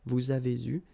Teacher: here you can see that we make double liaison